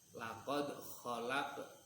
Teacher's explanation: qalqalah sughra itu cara membaca mantulnya tidak terlalu mantul, sedang